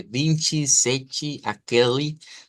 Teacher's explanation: palabras que terminan en e y la e en el portugués al final siempre se convierte en una vocal y larga